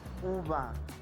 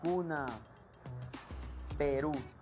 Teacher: labios están en forma circular vocal un fonema es de vocal se pronuncia acercando mucho la parte de atrás de la lengua al velo del paladar en la parte posterior de la boca los labios se cierran mucho y se redondea